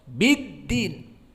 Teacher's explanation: Adapun dal tidak panjang karena dia syiddah, tidak ada rokhawah, dan juga jahar, tidak ada nafas yang keluar.